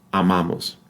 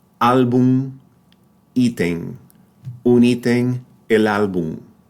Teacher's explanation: However, in the other 0.1%, right, when M appears in word final position, it's pronounced like an N or more like a very nasalized, a noticeably nasalized N